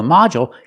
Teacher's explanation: the first syllable so the second syllable is short modu and we see the D makes the J sound like juice and jump